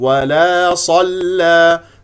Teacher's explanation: لانها مفتوحه ولا صلى ولا افتح الفم في الالف ولا صلى صاد مفخمه مرتبه ثانيه لانها مفتوحه لا تقول ولا صل ص صل صو لا تكور الشفتين خطا